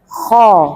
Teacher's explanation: Dia pangkal lidahnya naik ke atas ibu, cukup lidahnya yang bermain lidah, bukan dari bibir juga. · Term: huruf-huruf isti'la